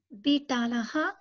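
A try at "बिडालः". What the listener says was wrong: Bidalaha. Bidalaha. Not ta, it is da.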